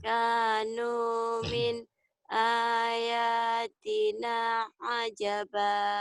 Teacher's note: ayatina A-nya panjang, ya-nya panjang.